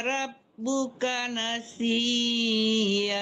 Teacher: Kalau tanwin itu berhentinya iya, jangan iyan.